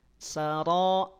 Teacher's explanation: Saro tafkhim, pangkal lidahnya naik.